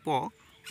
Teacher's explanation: মানে কি অষ্ঠ মানে হচ্ছে ঠোঁট কারণ পচারণ করার সময় কি আমাদের ঠোঁটে আর ঠোঁটে টাচ হয় তখন প উচ্চারণ হয় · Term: অষ্ঠ ধ্বনি